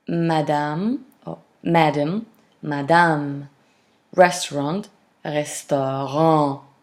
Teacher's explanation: Restaurant, restaurant. So you see the last syllable is pronounced slightly lengthened.